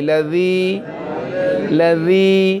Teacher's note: লাযির মধ্যে জাল উবাইদাতের মাঝখানে জিহ্বার আগা রেখে উচ্চারণ করতে হবে